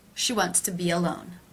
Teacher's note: the e as in sheet linking to the schwa sound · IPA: [ʃi wɑnts tə bi‿ə ˈloʊn]